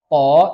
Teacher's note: huruf to ini nggak berangin. To itu tidak berangin. Nah, kita sebagai orang Indonesia agak sulit ngucapin huruf to tapi nggak berangin.